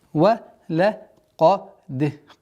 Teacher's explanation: qa твердая, даль мягкая и калкала мягкая, мягче, чем каф.